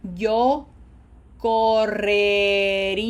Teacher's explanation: Did you see how I lengthen that E to give my speech muscles a little bit more time to reconfigure?